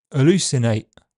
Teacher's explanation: It's a word that starts on a glottal fricative and ends on an alveolar t in standard English, but in regional accents, it could easily begin and end on glottal stops. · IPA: [ʔəˈluˑsɪneɪʔ]